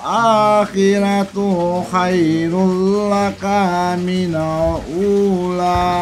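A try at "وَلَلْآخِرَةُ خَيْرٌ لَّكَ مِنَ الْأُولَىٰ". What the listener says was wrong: Jadi ada cengkok di huruf yang pendek. Akhirnya huruf pendek itu jadi memanjang. Walal akhiratu khairul laka minal ula. Nah, kalau mau ditekan di huruf madnya ula gitu.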